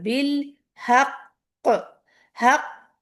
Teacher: پہلے ایک قاف جو ہوتا ہے نا اس پہ رکتے ہیں اچھا خاصا, پھر دوسرے والے قاف پہ باؤنسنگ ساؤنڈ کرتے ہیں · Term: قلقلہ